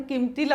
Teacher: हा इथला जो अनुस्वार आहे ना तो किमतीला म्हणताना जातो, कारण आपण किंमतीला असं नाही म्हणत, आपण किमतीला म्हणतो. तिथे आपोआपच आपलं बोलतानाचा पण अनुस्वार निघूनच जातो.